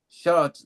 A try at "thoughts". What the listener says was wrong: Gee, thoughts. thoughts. No, not short. I'm hearing it as shots.